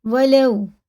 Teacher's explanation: یہ واو ساکن سے پہلے زبر ہے تو یہ حرف لین سے جلدی پڑھیں گے